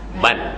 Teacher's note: walaupun ditulis dengan 2 fathatin, tapi kita sebut dia bunyi macam nun mati